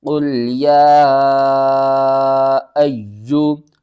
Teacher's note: یا کے اوپر آپ دیکھیں چھوٹی مد ہے، اس مد کا نام مد منفصل ہے، اس کو 3 الف کے برابر آپ نے کھینچنا ہے